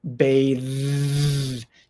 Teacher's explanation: unvoiced th sound bath bath it's very quiet bash but again the verb b a t h e has the voiced th sound